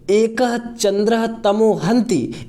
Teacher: क के बाद विसर्ग का तालव्य सकार में बदल गया क्यों क्योंकि च का उच्चारण तालू से होता है